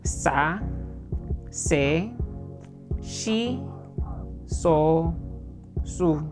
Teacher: So, kung papansin nyo, wala talagang air. Napaka-dry nung tunog niya.